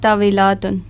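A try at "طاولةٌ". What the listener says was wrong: طاولاتن نہیں ہے, طاولتن. لام کے اوپر آپ الف پڑھ رہی ہو. طاولتن.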